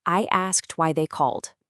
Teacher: That quiet K sound in asked, it leads right into that sharp T sound. And that buzzy L sound in called, it leads to that softer D sound.